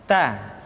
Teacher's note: huruf ta keluar dengan menyentuhkan ujung lidah kita dengan gusi gusi gigi seri bagian atas ta kemudian huruf ta ketika diucapkan terdengar ada nafas yang mengalir